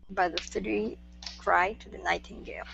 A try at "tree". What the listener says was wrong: Okay, give me tree instead of three.